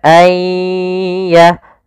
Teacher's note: Kemudian langkah kedua, karena di sini kita makan dengan idgham bi gunnah, maka kita tahan disertai dengan gunnah. Gunnah itu menahan, dengung. Maka ayya. Kemudian pada lafaz dhad di sini dhadnya tidak boleh memantul.